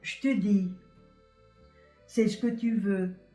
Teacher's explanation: Now, there are also a series of little mute words, little je, te, ce, que, little words that come together like that, and they are called fixed forms, and they're always supposed to be pronounced like that. So when you have je and te together, it's always going to be pronounced chte. And when you have ce and que together, it's always going to be pronounced ske.